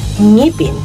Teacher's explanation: ang paraan ng artikulasyon ng letrang ito ay napabilang sa pailong at may tunog, at ang punto ng artikulasyon ay napabilang sa pangalangala at napabilang naman ito sa velar.